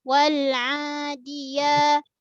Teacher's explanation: Yang dal ujung lidah kita sentuh belakang pangkal gigi atas.